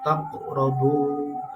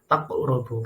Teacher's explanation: Nah, huruf qalqalah di sini termasuk dalam kategori qalqalah sughra karena mantulnya disebabkan huruf tersebut disukun atau dalam kondisi mati